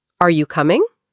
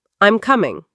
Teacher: Questions rise. Are you coming? Statements fall.